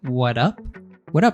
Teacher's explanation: removing the S at the end of what's and having the connected speech there with the American T